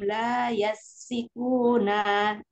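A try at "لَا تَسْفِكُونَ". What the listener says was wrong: Ya, ta Umi bukan ya Um. La tasfikuna. Dari la tas Jadilah dari latas fikuna di tengah-tengah u.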